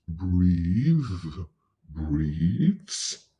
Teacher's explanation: Here the TH is voiced.